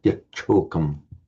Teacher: So the t becomes the t followed by a sh merges by sandhi into a double aspirated ch